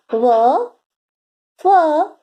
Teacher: दंतोष्ठ्य, दांत और ओठ को मिलाकर इन वर्णों का उच्चारण होता है।